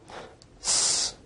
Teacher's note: S is a voiceless alveolar fricative